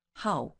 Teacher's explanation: It's how, fourth tone, falling one.